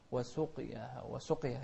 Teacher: وسقياها هي فيها قلقلة مو كسر